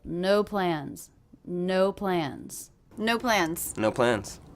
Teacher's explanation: I'm really hearing this as two different stressed words they're both one syllable